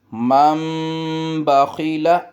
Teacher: وَأَمَّا مم، نون نہیں پڑھیں گے، مم میم سے ملائیں گے، مم بخیل، یہ اصول یہ ہوتا ہے کہ نون ساکن کے بعد اگر با آ جائے تو وہاں میم کی آواز آئے گی